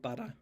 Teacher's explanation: a t between two vowels just turning into a tap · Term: alveolar tap